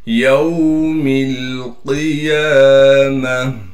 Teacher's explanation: काफ को मोटा करके पढ़ेंगे। काफ मोटे हरूफ में से है।